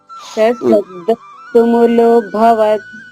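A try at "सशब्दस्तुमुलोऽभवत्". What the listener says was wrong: Very good అమ్మా.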